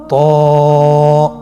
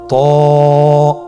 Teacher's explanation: জিহ্বার আগা, সামনের উপরের 2 দাঁতের গোড়ার সঙ্গে লাগিয়ে উচ্চারিত হয়।